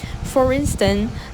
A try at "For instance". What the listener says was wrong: For instance, you didn't quite get that S sound at the end.